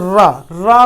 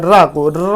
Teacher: रा का उच्चारण करते समय हमारी जीभ अंदर की तरफ लुढ़कती है, तो इसे हम इसीलिए लुंठित वर्ण में रखते हैं, या इसे हम लुंठित वर्ण कहते हैं।